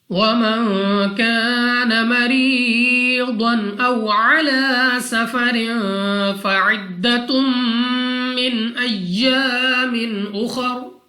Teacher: نون ساکن کے بعد کاف حروف اخفا میں سے ہے، اخفا کا قاعدہ غنہ کر کے پڑھنا ہے۔ الف سے پہلے زبر الف مدہ 2 سیکنڈ تک لمبا کرنا ہے۔